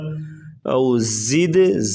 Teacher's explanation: او زد زا سختی سے اور دال پہ کلکلا کریں گے، دال ساکن ہے۔